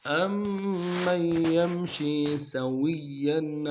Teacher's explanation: أَمَّن میں حمزہ کو میم کے ساتھ ملانا ہے، میم کے اوپر تشدید زور دیں گے، اور میم کو آگے یمشی کی یا کے ساتھ ملانا ہے، نون کے ساتھ نہیں ملائیں گے، یمشی کی یا کے ساتھ اوپر تشدید ہے، زور دیں گے.